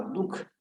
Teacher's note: दु के बाद में ह का उच्चारण हुआ